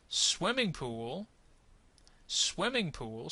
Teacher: swimming is going to get the accent there